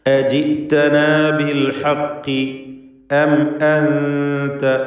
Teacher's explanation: സാക്കിനത്തായ മീമിനെ ഇൽഹാർ ഷഫവി മണിക്കാതെ വെളിവാക്കി ഉച്ചരിക്കുക